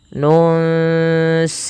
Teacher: Ini sama kita baca dengan bacaan ikhfa, yaitu disamarkan bunyi nunnya kepada huruf sin.